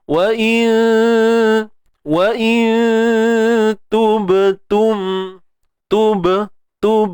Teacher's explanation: Ba yang mati ni qalqalah sughra, lantunan kecil je.